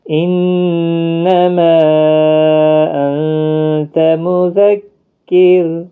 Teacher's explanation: را باریک پڑھا جائے گا ساکن جب ہوگا، کیونکہ زیر ہے کاف کے نیچے، اور یہاں پر مد منفصل ہے، حروف مدہ کے بعد حمزہ بشکل الف آیا ہے تو چھوٹی مد لگی ہے جس کو 3 الف کے برابر کھینچنا ہے۔